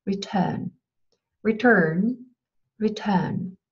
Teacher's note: Und Britisch-Englisch ist dann natürlich ohne postvokalisches R, also Return.